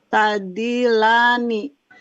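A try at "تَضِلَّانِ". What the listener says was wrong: Tasdidnya dikuatkan ya, Bu?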